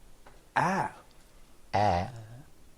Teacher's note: form of the front position and the high of the tongue the height of the tongue actually is low